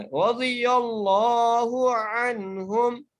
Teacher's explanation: لام کو موٹا کر کے پڑھنا ہے